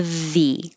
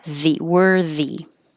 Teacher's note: with a voiced th